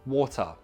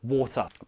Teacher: Posh people do not glottalize this.